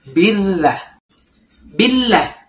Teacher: pada lafaz Allah itu lamnya ditahan ya 2 detik karena di sini ada tasdidnya. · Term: tasydid